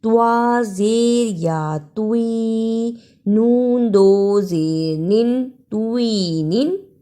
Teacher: توا اور تا دونوں کی آواز میں فرق ہے۔ توا کو موٹا پڑھنا ہے